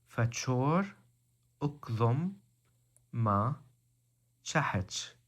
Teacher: in the modern dialects the T sound has become cha